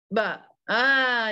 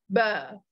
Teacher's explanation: dia keluar daripada dua bibir yang ditutup dan buka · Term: huruf ba